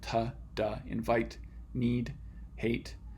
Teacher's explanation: You're making a closure at that alveolar ridge again. These are not ends, but they're being produced at the same spot in your mouth. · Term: alveolar stops